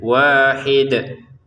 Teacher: Dalnya kita pantulkan karena kita berhenti ya, sehingga dia terbaca sukun ya, walaupun harokatnya kasrotain, kalau berhenti terbaca sukun. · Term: Kolkolahnya